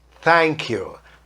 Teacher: A minha pronúncia é simplesmente encostando a língua na ponta do dente antes de falar o TH e puxando para fazer o som do T. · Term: pronúncia de TH